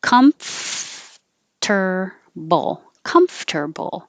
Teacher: you have to close your lips for the m and then you have to open them enough so that your top teeth are behind your bottom lip making air flow